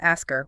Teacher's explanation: Americans simply do not exhale the puff of air required to make the h sound. The h vanishes.